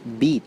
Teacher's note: at the high front part of the vowel space we have two vowels